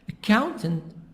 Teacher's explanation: Accountant, stress is in the middle. The sound is higher in the middle.